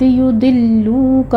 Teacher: لام کے پر تشدید ادا کرتے ہوئے آگے واو مدہ ہے، 2 کاؤنٹ کیجیے گا